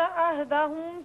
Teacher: عہدہم میں میم ساکن ہے نا، یہاں غنہ نہیں کرنا